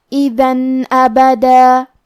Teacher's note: تو ہمیں تنوین کو ظاہر کرنا ہے اور بغیر غنہ سے یہ حکم کو ادا کریں گے۔ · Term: اظہار